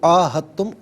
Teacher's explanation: عین الف زبر آ، اس کو ایک الف کی مقدار کھینچ کر پڑھنا ہوتا ہے